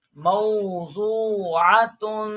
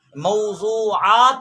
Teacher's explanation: عین حرکت والا ہے اور یہاں کو اس کو کھینچنا نہیں ہے